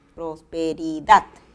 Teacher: acento prosódico en la palabra prosperidad está en la última sílaba